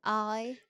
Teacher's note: Now, there might be some rounding, but it's definitely not oi.